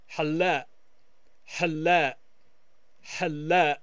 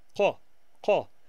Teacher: Other people will pronounce it as a stop of the vowel, halla, halla, halla. So you hear how the vowel A stops when we have that Q.